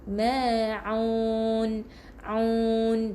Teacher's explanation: Jadi macam bunyi huruf A, bunyi huruf U u kalau huruf hamzah. Kalau huruf ain di bahagian kerongkong juga, tapi di bahagian tengah dekat halkum kita jadi kena dalamkan sikit